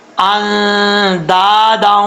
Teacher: دال کے آگے الف ہے، اس کو 1 الف کی مقدار لمبا کریں گے